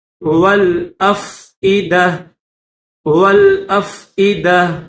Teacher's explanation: جب گول تا پر وقف کیا جاتا ہے تو اس کو ہا پڑھتے ہیں ، تو اس کو ہا پڑھیں گے، جب ہم وقف کریں